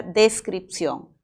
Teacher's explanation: Tú sabes que la N es un sonido nasal. Según el punto de articulación es alveolar. Y según las cuerdas vocales es sonoro